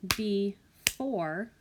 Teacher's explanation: When I clap that out, before, I hear the or sound in the second syllable.